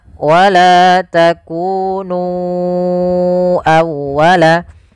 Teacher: Kemudian pada lafal nu awwalaka, ya di sini sama hukumnya dengan lafal bima anzaltu, yaitu adanya mad jaiz munfasil. Maka kita harus memanjangkan nu-nya sepanjang 4 atau 5 harakat.